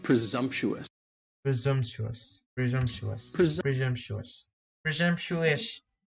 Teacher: presumptuous has four syllables and the stress is on the second syllable and the S almost sounds a little more like a z